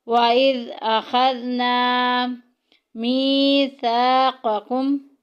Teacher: وَإِذْ أَخَذْنَا، اخذنا میں دیکھیں الف پیچھے زبر آ گئی، الف مدہ کا قاعدہ جاری ہو رہا ہے، ایک الف کے برابر لمبا کریں گے۔ وَإِذْ أَخَذْنَا مِيثَاقَكُمْ، میثا میں دیکھیں الف پیچھے زبر آ گئی، الف مدہ کا قاعدہ جاری ہو رہا ہے، ایک الف کے برابر لمبا کریں گے۔